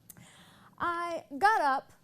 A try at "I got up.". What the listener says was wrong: So you lost your power in your voice again. So you go into this place that makes you sound like a little girl. And we need to keep you in this powerful, resonant voice that you do have sometimes, but you allow it to disappear.